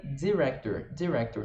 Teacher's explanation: Então é como se fosse um DZ bem curtinho, director. Não é director ou diretor, né?